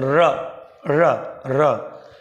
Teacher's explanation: र में कंपन हो रहा है तो क्या हो गया, लुंठित, प्रकंपित या कंपन जात।